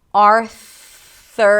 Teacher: stick the tongue out for the TH. It's a soft TH, just air. Arthur, and then pull it back to the R.